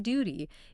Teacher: back in your throat almost like you're about to yawn and for that ew sound in words like Duty imagine you're adding a tiny Y sound before the almost like Duty it might feel a bit strange · imagine you're adding a tiny Y sound before the ooh, almost like duty.